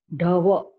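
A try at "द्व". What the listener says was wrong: It is wrong, I'm saying. You cannot say da. How can you say da? When you say da, it is dakara plus a. The vowel a is there. Dva. Dva. It is dva, not dava. It is dva. You can see, it is dva. When you say dva, dava, you see the difference? What is the difference between dava and dva? Dava. Dava will be different. Da will be different.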